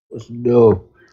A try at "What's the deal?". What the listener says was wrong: I heard mumbles. You had to enunciate. The whole mouth.